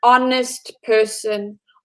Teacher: have more of a vowel sound for example an honest person honest would start with an H but the pronunciation or the sound sounds like an O